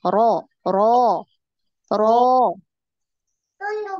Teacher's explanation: Nah, naik. Yang fathah itu naik, dinaikkan pangkal lidah.